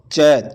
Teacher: च का उच्चारण स्थान होता है च च तालू से बोला जाता है